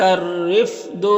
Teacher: یہاں پر الف لام حروف شمسی را کے شروع میں تو الف لام دونوں کو نہیں پڑھیں گے، اور رائے مشددہ کے نیچے زیر ہے تو را کو باریک پڑھیں گے